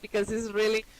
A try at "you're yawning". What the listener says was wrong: You're yawning. It's like yaw, not jaw. You're saying jaw. It's you're yawning. You're yawning.